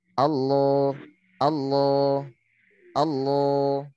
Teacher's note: Kalau tebal, dia pangkal lidahnya agak naik ke atas, pangkal lidahnya. Atau lidahnya agak tegang.